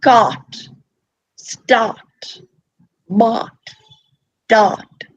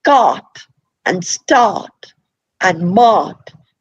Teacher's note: the R is not pronounced because the vowel is elongated.